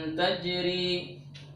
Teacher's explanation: Roknya di sini berharkat kasroh, maka rok yang berharkat kasroh itu dibaca tipis